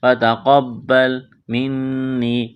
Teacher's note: نون مشدد پر غنہ کریں گے، آواز ناک میں چھپائیں گے